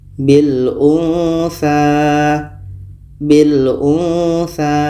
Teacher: Nun mati bertemu sa. Sa huruf ikhfa. Maka ini kita samarkan.